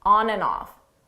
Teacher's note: the and you don't hear it at all it sounds just like a n on off on off on off and then you combine that